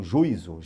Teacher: esse i pode se juntar a esse u e nós teríamos aí um som de um ditongo, juízo. E na verdade não, ele é um som distinto, tá?